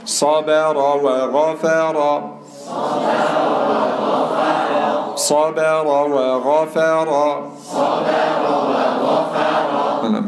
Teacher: صاد تفخيم باء ترقيق، راء تفخيم واو ترقيق، غين تفخيم فاء ترقيق راء تفخيم